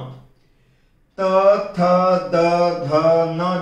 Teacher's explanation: हमारी जीवा का अग्र भाग हमारे दांतों को अंदर से स्पर्श करके बार बार उनको प्रहार करके हटता है